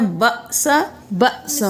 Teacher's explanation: باسا اور باسا نہیں کرنا، جھٹکا دے کر پڑھنا ہے